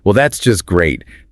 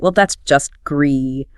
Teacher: But now contrast that with a low dead pan pitch, a slow pace, a descending intonation, stretching out the word great.